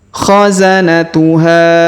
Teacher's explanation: kemudian huruf ha kita panjangkan lima harakat karena di atasnya terdapat tanda garis panjang 5 harakat yang ini